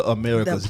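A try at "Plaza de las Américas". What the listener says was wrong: You got to do the R. You got to roll the R. Americas.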